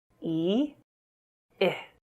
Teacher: Your mouth stretches wider with the /i:/ sound while it is more relaxed with the /ɪ/ sound. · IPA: /i:/ /ɪ/